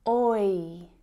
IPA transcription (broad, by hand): ɔɪ